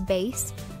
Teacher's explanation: Vase as base, replacing the v with b, because v doesn't exist in Spanish